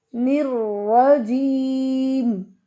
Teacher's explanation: نر، را کے پر شد ہے، 2 دفعہ ادائیگی ہوگی. نر، را کے پر زبر ہے، را کو موٹا پڑھیں گے